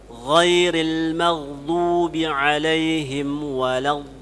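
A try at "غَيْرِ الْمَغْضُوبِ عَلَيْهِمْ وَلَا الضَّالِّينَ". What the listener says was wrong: Ya, panjangkan 6 harakat di situ. Di situ numbernya itu. Di situ dinabarkan.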